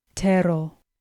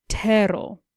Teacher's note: With tero, again, we find a two-syllable word with the stress on the first syllable.